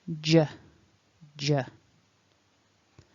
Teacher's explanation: it's the same sound in a word like jump or july j so you need some voicing in your throat and remember no e at the end so that final syllable